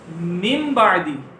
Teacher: نون ساکن اور تنوین کو میم سے بدل دیں گے اور گننا بھی کریں گے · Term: اقلاب